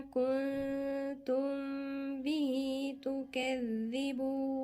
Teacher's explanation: إلى ما كنتم، نون ساكنة وبعدين تاء غنة إخفاء، بعدين في غنة هنا تانية، يعني هنا في غنة وهنا في غنة. كنتم، ميم ساكنة وبعدين الباء غنة إخفاء اللي هي بتاعت أحكام ميم الساكنة